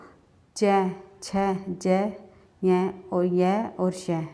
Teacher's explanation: जीवा का अग्र भाग यानी आगे का भाग कठोर तालू का स्पर्श करता है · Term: तालव्य व्यंजन